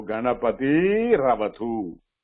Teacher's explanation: The next one is starting with a. The visarga will be replaced by refa. Then refa followed by a will become ra.